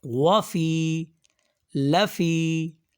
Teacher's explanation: و میں وا جو ہے وہ شارٹ ہے اور فی تھوڑا سا لمبا ہے، وہاں پہ و جو ہے اس پہ سمپل زبر ہے اور فی میں یا مدہ بھی ساتھ ہے، اس لیے اس کو لمبا کیا جا رہا ہے۔